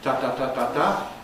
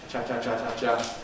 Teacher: Africates are just the same except that in the case of the africates as we saw the release is gradual instead of sharply separating · Instead of sharply separating, as a plosive would, ta-ta-ta-ta-ta, in the case of affricates, cha-cha-cha-cha-cha, we get a slow release.